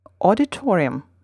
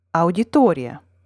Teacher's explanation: in the russian word the second strongest syllable is the one immediately before the stressed syllable